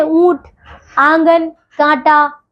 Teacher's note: अंग को अनुनासिक कहते हैं, इसका उच्चारण नाक से और गले से होता है